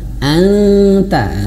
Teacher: Nah, kemudian nun mati bertemu ta ya, itu ikhfa, maka nun mati ya, makhrajnya lidah kita mau menyentuh ke huruf ta. Anta, lidah kita sudah mengucapkan huruf ta.